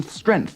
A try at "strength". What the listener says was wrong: Strength with a G. Strength. Strength. Not strength.